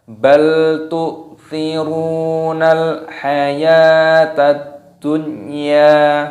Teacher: Tetapi di sini ada pengecualian, yaitu ini di dalam hukum idgham bi ghunnah sudah disebutkan, termasuk lafadz dunya itu tidak didengungkan, jadi dibaca jelas